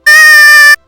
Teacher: we have the Glottal Stop, it kinda sounds like when you stub your toe